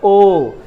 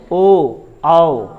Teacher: ध्वनि कंठ से निकल रहा है और मुंह गोल बना रहा है कौन, ओठ, ओ औ, है ना, तो ओठ का भूमिका होता है और किसका, कंठ की भूमिका होती है। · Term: कंठोष्ठ वर्ण